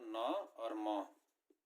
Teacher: जिन व्यंजनों के उच्चारण में हवा नाक से निकलती है, नाक और मुंह दोनों से निकलती है, उसको बोलते हैं आपका अनुनासिक व्यंजन।